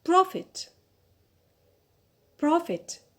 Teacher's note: so here the stress is on the first syllable on pro